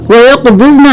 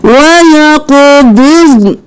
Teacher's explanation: ضاد کو بھی ساکن پڑھنا ہے موٹا کرتے ہوئے، نون کو بھی ساکن پڑھنا ہے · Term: نون ساکن